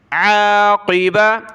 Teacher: عین کو گلے سے نکالیں، قاف کو موٹا کیا